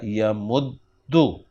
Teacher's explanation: تو یم دو دو میں جب ہم نے دیکھا میم ہمارے پاس ساکن پڑا ہے تو ہم نے دال کی پیش کو میم کو ٹرانسفر کر دیا اور یہ بن گیا یمددو، یمددو، اور پھر دونوں دالوں کو مرج کر دیا، ان کا ادغام کر دیا تو یہ بن گیا یمدو